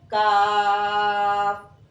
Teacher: अब कौफ के मखरज से जरा नीचे कौफ के मखज से जरा नीचे मुंह की जानिब मुंह की जानिब जबान की जड़ जब उसके मुकाबिल तालू से लगे तो एक हर्फ काफ अदा होता है